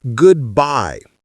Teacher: the stress is on the second part.